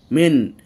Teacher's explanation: নুন সাকিনের পরে হামজা এসেছে এজন্য নুন সাকিন উচ্চারণকে স্পষ্ট করে পড়ছি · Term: ইজহার, এজহার